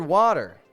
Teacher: The word water, for example, has 2 syllables. The first half of the word is a little bit louder than the second, and so we call that the stressed syllable. Now, the second half of the word, water, is the unstressed syllable. · Notice as well that it's beginning with a T, and that T is between 2 vowel sounds, water. So we make that T soft, kind of like a D, and that's what we call a flap T.